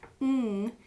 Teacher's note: Ng is a hard sound to kind of do and imitate just in isolation, but ng, you actually have your tongue up, but the velum is open. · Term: nasal sound